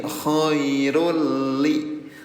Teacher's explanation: irul namanya idgam bila guna, bila tanpa guna dengung. Jadi hanya dileburkan saja tanpa ditahan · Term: idgham bila gunah